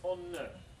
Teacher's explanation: Dental fricative z changes to alveolar nasal due to preceding velar. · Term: lagging assimilation of place and manner